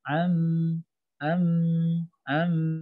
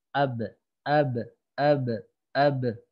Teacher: Amta, suara amnya ngalir. Amta, ngalir dan ke rongga hidung sini ada dengung. Walaupun sebentar dengungnya.